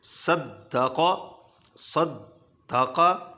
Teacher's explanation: اب صاد سیٹی والا حرف صفیری ہے تو سیٹی بجے گی